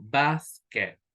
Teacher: in basket, for example, we have this stress in the first syllable